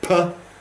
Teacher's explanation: we stopped the air at the lips and then release it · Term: plosives